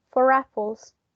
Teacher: we will pronounce the final r sound even though in isolation we wouldn't pronounce that a final r sound